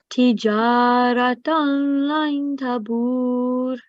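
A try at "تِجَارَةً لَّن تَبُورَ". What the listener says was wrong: Okay, so it's not nasal sound for the tanween because we are going to do idgham merge without nasal sound here. But for noon here, as you can see, again today's lesson ikhfa.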